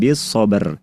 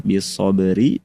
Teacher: Jadi bacanya ketika waqaf suara huruf ro bunyinya sukun bis sober. Tapi ketika disambung karena kita ingin hendak mengamalkan cara yang kedua, maka ro-nya dibaca sesuai dengan harokatnya kasroh bis soberi